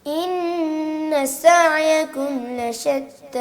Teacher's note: آپ نے سین نکالنے کے چکر میں نا سین کے اوپر زور دے دیا، حالانکہ سین پہ زور نہیں دینا تھا.